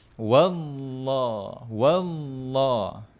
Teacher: Kemudian pangkal lidah kita ni kita kena angkat. Kita kena angkat pangkal lidah tu. Ha barulah dia akan bunyi tebal.